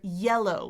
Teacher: it's more like a, a Y sound with my tongue tip down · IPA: /y/